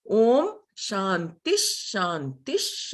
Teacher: this Visargaha becomes Sh